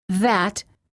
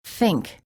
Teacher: There are two TH sounds in English: the voiced TH, as in that, and the voiceless TH, as in think. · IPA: /θ/